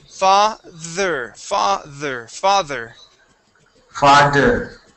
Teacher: Well, this is a voiced TH in this word. It sounds like a vibration. Okay, you'll feel a vibration in your throat as well as in your mouth.